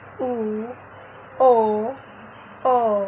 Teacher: vokal yang dihasilkan dari gerakan lidah bagian belakang atau Pangkal lidah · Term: vokal belakang